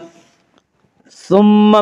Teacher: ثم میم مشدد غنہ ہوگا